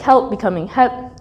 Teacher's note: there is a dropped l sound and words like help becoming help